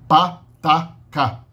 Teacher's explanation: Pá é a bilabial, tá é o veolar e cá é a velar. Essas são as consoantes menos sonoras. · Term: oclusivas surdas